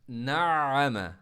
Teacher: देखें, नाम, आइन को मैं स्ट्रेस भी दे रहा हूँ, जोर भी लगा रहा हूँ, आइन को स्टॉप नहीं कर रहा हूँ, यानी आवाज़ सर्कुलेट करके बाहर निकल रही